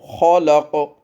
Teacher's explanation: قاف کے اوپر قلقلہ، قلقلہ آواز میں گونج کو کہتے ہیں، ڈبل آواز کو کہتے ہیں۔